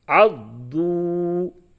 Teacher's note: یہ واو مدہ ہے، اس کو کھینچ کے پڑھیں گے. ہاں اتنا بھی نہیں کھینچنا ہے، بس ایک الف کے بقدر کھینچنا ہے